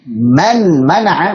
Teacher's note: Contoh misalkan kalau kita ucapkan man mana'a wa man azlamu mimman mana'a nun sukun ketemu mim. Tentunya kalau kita izharkan nunnya jelas man mana'a, maka akan terasa berat pengucapannya. Supaya ringan, maka nunnya dileburkan ke mim menjadi mimman mana'a.